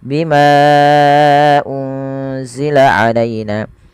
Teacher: Bima dasarnya dua harakat. Ketemu hamzah setelahnya dan hamzah di lain kata maka dinamakan mad jaiz. Panjangnya empat atau lima harakat.